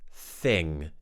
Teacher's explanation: Th and th, remember, are the TH sounds where we put the tip of the tongue between the teeth and we push the sound around the gaps which are created from the blockage that the tongue is making.